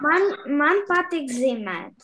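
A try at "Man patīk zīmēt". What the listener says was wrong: Ман патик зимет. Да, мне нравится рисовать.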